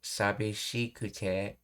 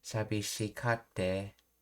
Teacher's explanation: Kansai ben is frequently contracted to kate. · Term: Kate contraction